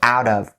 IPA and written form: aʊ-dəv (out of)